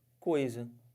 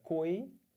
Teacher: Do O para o I. Do O para o I eu estou descendo. Se eu estou descendo, isso é um ditongo decrescente.